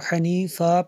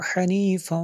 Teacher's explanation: وقف کریں گے اس کو حنیفا پڑھیں گے، جب ملا کے پڑھیں گے تو اس کو حنیفاں ایسے پڑھیں گے